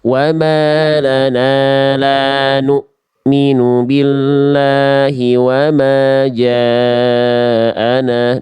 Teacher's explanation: Sifat dari huruf hamzah itu dari segi suara poin 2 namanya syiddah alias tertahan, maka putus bunyinya. · Jadi diputus, Bunda, jangan dikasih ngalir. Nu-nya diputus, dihentak atau diputus karena ketemu hamzah sukun.